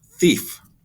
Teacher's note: i stick my tongue out just a little bit and make the th sound